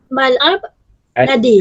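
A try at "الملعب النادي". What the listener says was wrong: an-nadi. Kena sebut Arab ni kalau alif kena sebut betul-betul. Kalau mal'ab mal'abun nadi.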